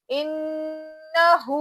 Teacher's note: नून पे गुना करना और हा उल्टा पेश हु एक अलिफ के बराबर उसको खींचना